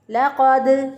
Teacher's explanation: لام کو باریک پڑھیں گے، قاف کو موٹا پڑھیں گے